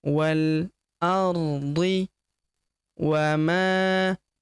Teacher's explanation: Wal huruf wa langsung lompat masuk ke huruf lam yang berharakat sukun langsung lompat masuk ke sini. Alifnya tidak dibaca atau dianggap tidak ada. Ini hamzah wasal atau hamzah penyambung ya.